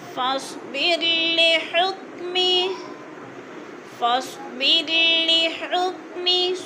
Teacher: صاد کو پر پڑھا جائے گا، بر کی رو باریک پڑھی جائے گی. حکمی، می کو لمبا نہیں کرنا، نیچے زیر ہے.